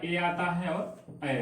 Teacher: ऐसे वर्ण जब उच्चारण हम करेंगे तो जीवा जो है कंठ पर भी जाएगी और तालु पर भी जाएगी, तो उसी को कंठ तालव्य कहा जाता है।